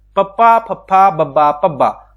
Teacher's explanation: ਉਹ ਧੁਨੀਆਂ ਜਿਨ੍ਹਾਂ ਨੂੰ ਬੋਲਣ ਲੱਗਿਆਂ ਆਪਾਂ ਲਿਪਸ ਦੀ ਵਰਤੋਂ ਕਰਦੇ ਆ ਉਹਨਾਂ ਨੂੰ ਆਪਾਂ ਹੇਠੀ ਧੁਨੀਆਂ ਕਹਿੰਦੇ ਆ।